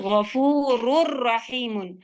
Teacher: जब नून बीच से बिल्कुल हट जाए तब आपका कंप्लीट मर्जिंग होता है